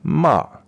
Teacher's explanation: the fourth tone is just falling